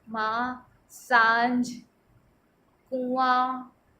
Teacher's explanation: माँ बोल रहे हैं तो नाक से भी वायु आ रही है, मुंह से भी बाहर निकल रही वायु।